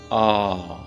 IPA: a: